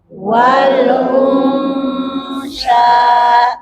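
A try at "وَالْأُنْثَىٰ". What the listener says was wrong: Nah, monyong. Nah, ketika gunnah jangan dimonyongkan. Wal unsa.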